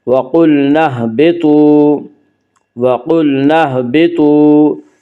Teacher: واو مدہ کو ایک الف کے برابر کھینچ کر پڑھیں گے